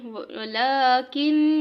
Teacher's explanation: ولکن پہ نون ہے اور نون کے اوپر شد ہے تو اس لیے ادھر غنہ کریں گے